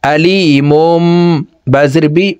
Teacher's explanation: প্রিয় দর্শক এই মিমকে যদি আমরা ওয়াকফ না করি তাহলে দেখুন তানউইনের পর ইকলাবের হরফ বা আসছে এই ছোট্ট মিম দ্বারা পরিবর্তন করিয়া গুন্নার সহিত পড়ব এভাবে পড়তে হবে মিম মিম দুই পেশ মুম আলিমুম বাজির বি